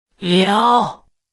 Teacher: In Mandarin, the third tone dips down and rises back up.